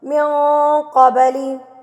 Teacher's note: قب پہ قلقلہ کرنا ہے، با کو ہلا کے پڑھنا ہے. با کے اوپر جب یہ جزم آ جاتی ہے تو با کو ہلا کے پڑھا جاتا ہے، قبلی پڑھا جاتا ہے، نہ کہ قبلی.